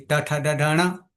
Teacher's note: પાછું મુરધા ક્યાં છે એનું સ્થાન ક્યાં છે આપણા મુખમાં તો મુરધા જે છે એ ઉપરના ભાગમાં જે ખાડો છે ત્યાં છે ત્યાં જીભની ટચ થશે